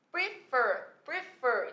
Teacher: a segunda sílaba, ela é tônica. Portanto, eu apliquei a regra do CVC.